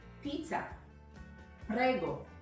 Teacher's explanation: I'm emphasizing the second from last syllable, which is very common in Italian, and many times even the third from last syllable is common in Italian.